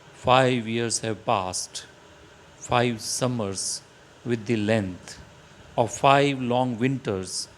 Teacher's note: This example also does not follow any rhyme scheme, you can see, but it is written in blank verse with iambic pentameter patterns of unaccented and accented syllables